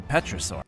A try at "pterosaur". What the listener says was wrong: Do you mean pterosaur? How do you mispronounce that? That's pterosaur, not petrosaur.